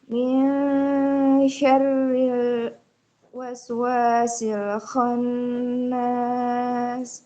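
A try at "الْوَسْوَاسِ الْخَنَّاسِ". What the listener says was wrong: Huruf sinnya jangan diputus, Ibu. Min syarril waswasil khannas.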